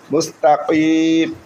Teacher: কফকে আমরা কলকলা হরফ একটু কলকলার মতো করে উচ্চারণ করবো, জিহ্বার গোড়া তার বারবার উপরে তালের সঙ্গে লাগাই উচ্চারণ হয়